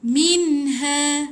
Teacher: Ingat nun mati yang ditulis tanda mati dia izharkan, jelaskan nun. Lepas tu jangan tahan, tak ada dengung. Jadi touch and go.